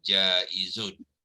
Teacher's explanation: Jadi bila menyebut jaiz tu sofirkan zai tu ya. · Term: sifat sofir